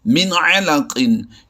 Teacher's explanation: یہاں پر نون ساکن میں آواز کو چھپایا نہیں جاتا بلکہ آواز کو ظاہر کیا جاتا ہے۔ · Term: اظہار